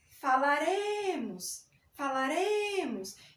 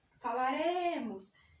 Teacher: note que o acento tônico, a sílaba tônica está no re. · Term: arrisotônica